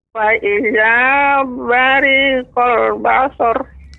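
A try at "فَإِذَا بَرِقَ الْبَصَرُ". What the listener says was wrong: Lebih cepat, Nek, untuk bariqa. Fa idza bariqal basar.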